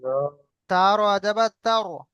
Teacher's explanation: এখানেও র সাকিন, তার ডান দিকে জবর এসছে, রকে আমরা পুর করব